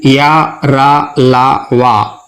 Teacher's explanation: अंतस्थ व्यंजन या रा, ला, वा, इन्हें उच्चारित करते समय जिह्वा मुंह के आंतरिक भाग से पूरी तरह स्पर्श नहीं करती है।